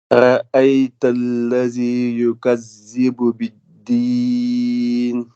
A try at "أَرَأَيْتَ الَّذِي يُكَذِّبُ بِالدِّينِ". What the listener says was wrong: Alors, lis lentement et surtout par rapport au début, parce que le début, on n'entend pas trop le premier mot.